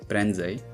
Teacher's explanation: [ę] is fully nasalized in the middle of a word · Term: nasal vowels